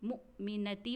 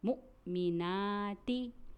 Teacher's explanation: نون کے اوپر کھڑا زبر ہے اس لیے ہمیں اسے ایک الف کے برابر کھینچنا چاہیے